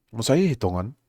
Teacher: the I just kind of gets unvoiced and kind of disappears. Say Tongan is kind of how that would sound sometimes.